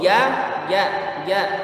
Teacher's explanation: Jangan ada hamasnya. Huruf ja itu jahar.